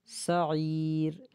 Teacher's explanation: با کو جلدی پڑھیں گے، با کو کھینچنا نہیں ہے